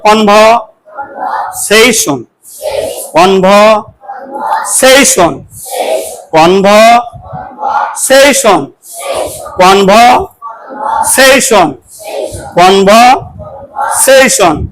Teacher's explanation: we have to put a stress on the syllable, last syllable, session